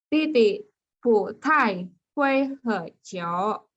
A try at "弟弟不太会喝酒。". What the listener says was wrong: 喝 satu ya. 弟弟不太会喝酒。